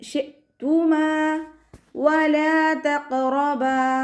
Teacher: ഖാഫ് ഇസ്തിഅലാൻ്റെ ലെറ്ററാണ്, ഉയർത്തിച്ചിരിക്കേണ്ട അക്ഷരങ്ങൾപ്പെട്ടതാണ്, ഉയർത്തി കൊടുക്കുക. കൽക്കലയുടെ ലെറ്ററാണ്, അപ്പോൾ സുക്കൂനാകുമ്പോൾ ഫുൾ സുക്കൂന് കൊടുക്കാൻ ശ്രദ്ധിക്കുക.